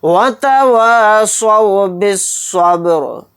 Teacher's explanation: را کو ساکن بنا کر پڑھیں گے آیت کرنے کی صورت میں